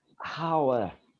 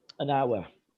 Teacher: in english the h in hour is almost silent it may be there but it's only slightly where you sort